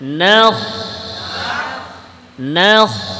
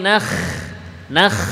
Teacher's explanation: ألم نخلقكم نخ নুন পাতলা করে না না না না নখ নখ, নুন পাতলা করেন, খ মোটা করেন